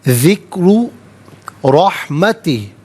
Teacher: ذکرو میں را پر پیش ہے، را کو پر کر کے پڑھا جائے گا۔